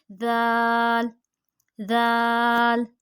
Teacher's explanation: اسی طرح جو ہمارا ثا کا مخرج ہے وہی ہمارا دال کا مخرج ہے، یعنی زبان کا سرا اور اوپر کے دانتوں کے اندرونی کنارے سے دونوں ادا کرتے ہوئے ہماری زبان کا جو سرا ہے وہ دانتوں کے بالکل اندرونی کنارے سے ٹچ ہوں گے۔